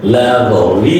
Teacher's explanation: the first L is a light L and the ending L is a dark L